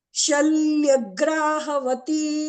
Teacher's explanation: अत्र द्वित्वमस्ति शल्यग्रा इति वक्तव्यं